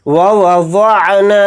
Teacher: دیں گے، واد کو یہاں پر موٹا یعنی پر پڑھیں گے، نون کے ساتھ الف مدہ ہے یعنی حروف مدہ، نون الف زبر نا کو تھوڑا کھینچ کر پڑھیں گے